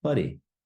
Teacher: Again, in Te Reo Māori, we roll our R's. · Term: rolling of the R